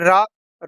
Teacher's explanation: अब देखिए रा ये मसूड़ों से बोला जाता है, इसको वत्सर्य कहते हैं। ये भी सघोष होता है, अल्प प्राण होता है, लेकिन इसको लुंठित कहा जाता है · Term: लुंठित व्यंजन